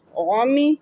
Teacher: وا کو منہ گول کر کے ادا کیا. وعمی، آئین بھی حلق کے درمیان سے ادا ہوگا.